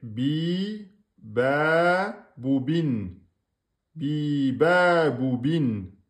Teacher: on a bi, deux temps. Ba, deux temps. Bou, un temps. Et bin, un temps.